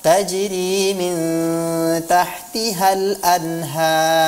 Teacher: Sebenarnya kita hanya perlu mentafkhimkan huruf ra itu, tidak perlu mendhammahkan atau memanyunkan kedua bibir kita ya